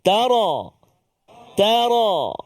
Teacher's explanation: Dan hati-hati juga pada huruf ra. Jangan bunyi tarqiq, dia mesti tafkhim.